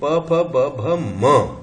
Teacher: Bilabial sound है, इसको place of articulation bilabial है, दोनों ओठ है ना।